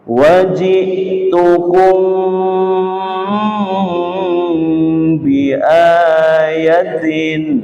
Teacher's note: Mim sukun bertemu dengan ba dibaca dengung dengan lama